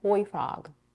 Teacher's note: we stress on the adjective toy a little more than on frog.